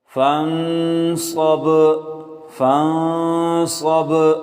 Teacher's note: فن، صاد با زبر صب، صاد کو موٹا کر کے با پر قلقلہ کریں۔